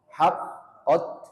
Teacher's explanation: ujung lidah bertemu dengan pangkal gigi seri atas